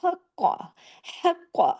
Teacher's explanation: قاف کے اوپر تشدید ہے، اور قاف کو موٹا بھی کرنا ہے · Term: ڈبل کاف